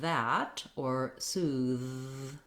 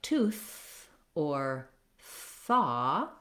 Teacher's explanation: voiced just means that when I'm saying that or soothe, that my voice is on, my vocal folds are vibrating